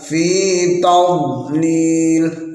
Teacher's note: Jadi sifat dari dhad ialah istitalah, seolah-olah memanjang ketika dibaca. Fi bukan fi tadlil, bukan fi tadlil atau fi tadlil, nggak boleh ada pantulannya.